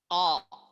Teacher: Jadi pangkal lidah maksud saya, pangkal lidah menyentuh langit-langit lunak bagian belakang